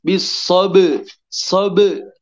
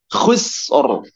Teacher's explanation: Ba-nya mantul ke huruf qalqalah dan suara yang dihasilkan menghasilkan bunyi pantulan b, bisobe, sobe, tinggal masukkan ro, maka terdengar sober.